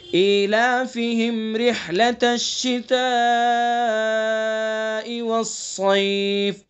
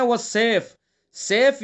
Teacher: صاد کو پر پڑھیں گے چونکہ حروف مستعلیہ میں سے، اور اس کو بھی والسيف نہیں پڑھیں گے.